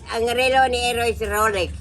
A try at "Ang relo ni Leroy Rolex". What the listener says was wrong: Leroy man lang, wala Eroy. Ang relo ni Leroy Rolex.